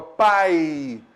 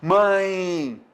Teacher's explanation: quando eu falo a palavra pai, o som decresce. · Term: semivogal